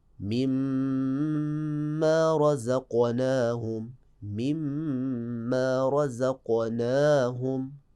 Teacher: حقیقت میں کیا ہے؟ من ما، اور نون ساکن کو میم میں تبدیل کریں گے اور پھر میم کا میم میں ادغام مع الغنہ کریں گے